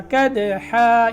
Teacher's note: کدحا، یہاں جب وقف کریں گے تو یہ 2 زبریں الف میں تبدیل ہو جائیں گی وقف کی صورت میں، تو یہاں الف پڑھا جائے گا. کدحا یعنی ایک زبر الف کے ساتھ.